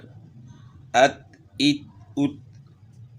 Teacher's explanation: یعنی اس میں آپ نے قلقلہ نہیں کرنا، تا کو ہلا کر نہیں پڑھنا